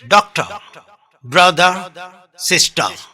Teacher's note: R is not pronounced openly in British.